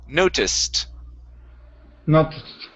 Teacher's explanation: Okay, with a T sound at the end. The ed on this word sounds like a T.